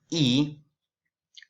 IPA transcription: i: